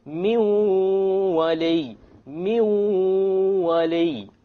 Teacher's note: We have min wali. Likewise, we drop the noon because the waw is of the letters of idgham with ghunna.